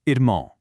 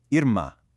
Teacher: That little W sound at the end is completely gone. Instead, it's an abrupt nasalized ah sound.